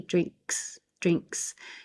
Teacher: You'll hear the S more than releasing the K.